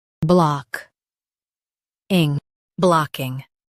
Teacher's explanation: Stress block and keep king light.